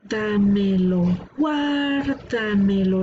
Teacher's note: la sílaba tónica está una antes de la antepenúltima